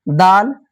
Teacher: जबान टच कर रहा है दांत से